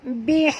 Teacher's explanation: ha sini ha pedas, jadi jangan baca musbihin, bukan hin tapi bunyi di hin, hin ya, ha pedas.